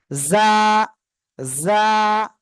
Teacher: দেখেন তো এই অক্ষরটা কি অক্ষর কি অক্ষর এটা যা এবার আগা সামনে নিচে দুই দাঁতের পেটও আগের সাথে লাগাবেন যা ঝিঝি পোকা একটু ডাকবে এমন উচ্চারণ হবে